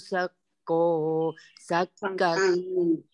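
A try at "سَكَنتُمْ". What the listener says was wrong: Sakantum, sanya pendek. sakantum.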